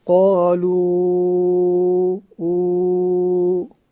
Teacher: وہ جو او کی آواز نکلے گی وہاں پہ، تو وہ او کی آواز خلا سے نکلے گی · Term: واو مدہ